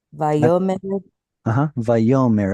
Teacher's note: On this first word, can you put the stress on the yod?